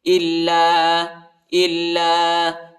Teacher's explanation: ہے اس کو ایک الف کی مقدار تک کھینچیں گے اور لام کو سختی کے ساتھ، شدت کے ساتھ پڑھیں گے